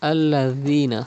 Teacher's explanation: Dal is pronounced without whistle.